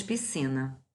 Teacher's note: 3 sílabas, trissílaba. Sílaba tônica penúltima. Por conta disso, paroxítona.